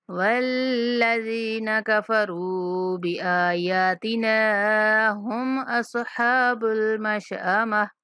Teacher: لام شدت سختی کے ساتھ، زال کے بعد یائے مدہ ہے، زال کو کھینچ کے پڑھیں گے اور نون کو نہیں کھینچنا